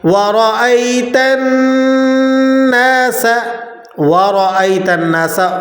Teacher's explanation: وَرَأَيْتَ النَّاسَ، وَرَأَيْتَ النَّاسَ، وا اس طرح کر دیا جاتا ہے، واؤ کو کھینچ دیتے ہیں، یہ درست نہیں ہے۔ را کو موٹا ادا کرنا ہے، را کے اوپر حرکت ہو تو را موٹی پڑی جاتی ہے، نیچے حرکت ہو تو باریک پڑی جاتی ہے۔